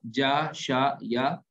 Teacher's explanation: یہ زبان کے بیچ سے ادا ہوتے ہیں